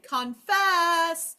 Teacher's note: And if I was calling the word confess for dinner, I would say confess it's time for dinner. And automatically, I know that the second syllable is where the accent is.